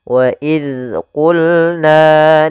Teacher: Pada lafal qulna ini qof jangan dibaca wail qulna. qul jangan huruf kaf tapi huruf qof ditebalkan